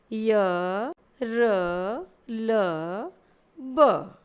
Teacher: इसी प्रकार अंतस्थ व्यंजन के बारे में जानते हैं। अंतस्थ व्यंजन को बोलते समय जिह्वा हमारे मुख के किसी न किसी भाग को स्पर्श तो करती है, परंतु पूरी तरह नहीं करती है।